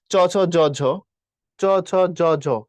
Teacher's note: একটু খেয়াল করো দাঁতের পিছনে উচ্চারিত হচ্ছে।